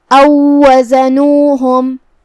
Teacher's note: کلمت او وزنوہم یہاں واو ساکن ہے، پھر حرف الواو آتا ہے کلمت وزنوہم اور یہاں واو پہ تشدید ہے تو ہم یہ واو کو دوسرے واو میں داخل کر کے ایک ہی واو پڑھیں گے تشدید کے ساتھ.